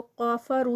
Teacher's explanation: کافرو, اس کو قافرو نہیں کرنا, کاف جو ہے وہ لائٹ والا ہے, دھیان رکھنا ہے. قافرو میں کاف ہیوی ہو گیا ہے. کافرو, رو پہ 2 کاؤنٹس, واو مدہ.